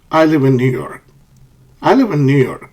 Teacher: I live in New York pitch Falls at the end